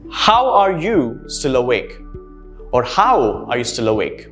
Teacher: notice how there's a falling intonation in the end